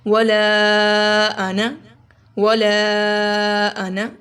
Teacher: یہاں پہ لا کو لمبا کریں گے، آنا کو لمبا نہیں کریں گے